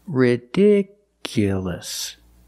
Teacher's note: The stress moved to the second syllable.